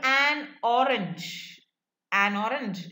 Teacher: the consonant at the end of one word gets attached to the vowel at the beginning of the next word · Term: meta-analysis